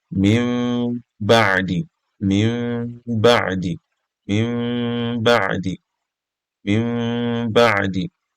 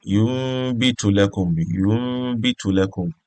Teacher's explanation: When you're pronouncing your noon sakina and then ba that comes after it, you will slightly change your noon to meme. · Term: Iqlab